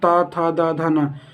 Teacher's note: ये आपकी जीभ जो है ये ता, था, दा, धा, ना, दांत को टच करेगी